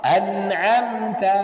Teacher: Ada gunnah yang ada sedikit sekali. Hampir kita katakan tidak ada. Jelas. An'amta di an sedikit itulah. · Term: gunnah naqisah